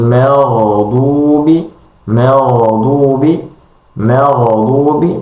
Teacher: memutus aliran huruf gin pada huruf sukun itu akan cenderung untuk memantulkan huruf gin